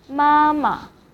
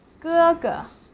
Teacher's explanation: the second syllable of them will be in neutral tone. And neutral tone is light and short